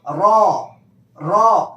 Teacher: نوک زبان تالو سے مل کر را ادا ہوتا ہے۔ اب نوک زبان تالو سے ملا کر آپ را کہیں گے تو یہ را ایسے آواز آئے گی، لیکن آپ کو پر کرنا ہے، اس پہ وزن دینا ہے، را را۔